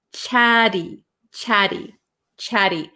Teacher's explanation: in American English we're gonna take these T's and we're going to make them a flap t chatty chatty chatty so it's gonna sound like a kind of